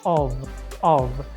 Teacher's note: they pronounce the F letter like V with a very small syllable